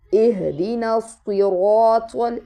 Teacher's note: یہ صاد ہے، سین نہیں ہے، طوا ہے، تا نہیں ہے